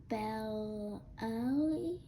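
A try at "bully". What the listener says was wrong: Well, that's belly right here. So we know that E makes that eh sound, so we know that U is not.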